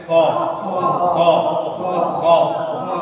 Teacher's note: खा ये पुर होने वाला लेटर है, ये हमेशा मोटा पढ़ा जाएगा। पुर मीन्स मोटा। मुंह को गोल करते हैं थोड़ा और इसकी आवाज अदा करते हैं खा, खा, खा।